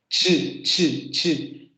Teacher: En el africado tenemos el momento oclusivo y el momento fricativo. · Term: fonema africado